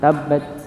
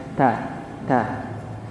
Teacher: Ujung lidah bertemu dengan gusi atas. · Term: huruf ta